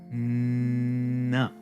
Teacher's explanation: So when I say n, right, the N is being made by my tongue touching the teeth, but the air is released out the nose.